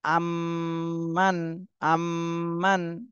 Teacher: মিমে তাশদিদ এখানে ওয়াজিব গুন্না করতে হবে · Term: ওয়াজিব গুণনা